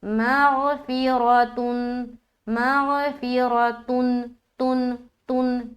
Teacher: اظہار کہتے ہیں ظاہر کرنے کو، اور یہاں پر ہم نون کی آواز کو ظاہر کریں گے۔ اس تا کے اوپر جو 2 پیش کی تنوین ہے نا، اس میں جو نون کی آواز چھپی ہوئی ہے اس کو ظاہر کرنا ہے، یہ کہلاتی ہے اظہار کا قاعدہ۔